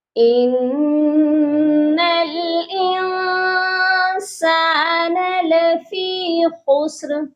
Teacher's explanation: نون مشدد ہے، اس نون پر ہم غنہ کریں گے کیونکہ نون مشدد پر ہمیشہ غنہ ہوتا ہے۔ انسان، اس والی نون ساکن پر ہم اخفا کریں گے کیونکہ نون ساکن کے بعد سین ہے جو حروف اخفا ہے، یہاں پر اخفا ہوگا۔